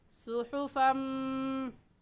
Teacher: सुहुफ़म पर क्यों गुन्ना किया? क्योंकि तनवीन के बाद हुरूफ़ यरमलून में से मीम आ गई है तो गुन्ना इदगाम के साथ करेंगे